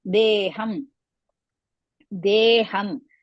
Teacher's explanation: deham, de is dirgha, ham hrisva